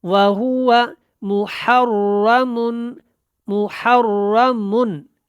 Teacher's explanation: من کے اوپر اخفا نہیں کرنا کیونکہ اس کے بعد عین ہے اور عین حروف حلقی میں سے ہے ، وَهُوَ مُحَرَّمٌ، محرمن، یہاں پہ اظہار کریں گے، وَهُوَ مُحَرَّمٌ،